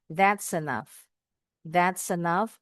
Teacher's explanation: consonant S is linking to the E vowel sound and the word enough